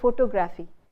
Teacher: Indian users tend to say, they carry over the same stress of photograph and they say photography.